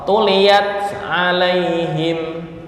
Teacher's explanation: tak itu ujung lidah, ama ain itu di tengah tenggorokan. Nah, ain sini ama ujung lidah. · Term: idgham mutaba'idin